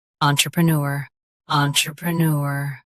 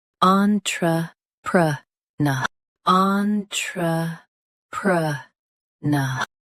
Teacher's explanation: US ends with nor UK ends with na.